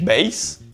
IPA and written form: ˈbɛɪ̯z (beyz)